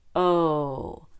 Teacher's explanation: O is just a little bit lower than ooh we do the same thing with our lips but the mouth will be a little bit more open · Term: long o